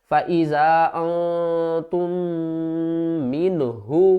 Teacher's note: تا کو دوسری میم کے ساتھ ملانا، میم مشدد غنہ کریں گے